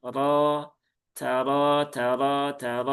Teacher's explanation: Kemudian ro-nya fathah maka dia tafkhim ya tebal.